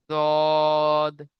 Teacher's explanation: 7 নম্বর মাখরাজ জিভের কিনারা এবং তার বরাবর উপরের মাড়ির দাঁতের গোড়ার সাথে লাগিয়ে উচ্চারিত হয়